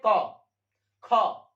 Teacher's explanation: पहले वर्ण और द्वितीय वर्ण है ये क्या होंगे अघोष होंगे इनका उच्चारण में कोई कंपन पैदा नहीं होती है · जिसका उच्चारण में कोई कंपन ही ना पैदा होता हो या कंपन ना होता हो उसे हम कहते हैं अघोष व्यंजन